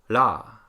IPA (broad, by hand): ɽ